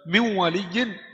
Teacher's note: Jadi gunah itu adalah suara bukan panjang. Suara keluar dari hidung. · Karena min waliyin sudah keluar suara dari hidung. Jadi gunnah ini bukan panjang, bukan harakat.